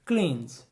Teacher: muitas vezes a gente não pronuncia esse E